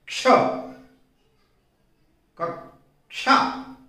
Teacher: आधा क बहुत जरा सा बोला जाता है